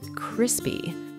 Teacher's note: we stress the word on the first syllable